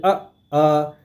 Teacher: तो इसको आप अपने कंठ पे आप चाहे तो हाथ रखिए। अब बोले अ तो आपके कंठ पे देखिए हल्का-हल्का वाइब्रेशन हो रहा होगा। तो यह जो है कंठ से बोला जाता है।